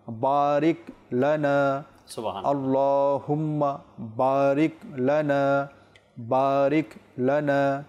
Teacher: জজম রয়েছে সেখানে থামতে হবে বারিকা নয় বারিকি নয় বা কোন কল কলাও নয় যেটা রিপিট আসে এরকমও নয় বারিক